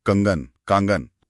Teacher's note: कंगन इसमें अंग की ध्वनि सिर्फ नाक से और कांगन इसमें आ की ध्वनि मुंह और नाक दोनों से